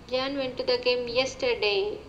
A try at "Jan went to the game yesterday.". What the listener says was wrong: You're putting more stress on yesterday, which is what you want to do, but you have to do more than that.